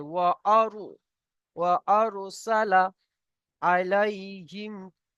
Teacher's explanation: ওয়া আর, এখানে র পুর হবে, এখানে র পুর হবে কেন, র সাকিনের ডাইনে জাবার এসছে, র পুর হবে